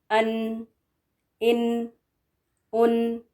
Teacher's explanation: the sound of the noon then travels back behind to the nasal passage and comes out from the nose, the qayshum, and this is called ghunna.